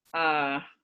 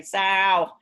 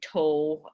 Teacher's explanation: That's because my dark L basically disappears. It's what we call vocalicized. It changes into a kind of vowel sound.